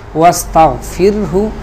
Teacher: اس را کو ہم باریک پڑھیں گے اس لیے کہ اس سے پہلے والے حرف پا کے نیچے زیر ہے